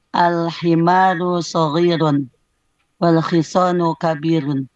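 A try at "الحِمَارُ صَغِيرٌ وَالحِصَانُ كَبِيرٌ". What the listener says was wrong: Baik.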